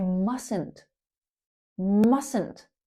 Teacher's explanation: Notice how that T in the middle is silent. We say mustn't not mustn't.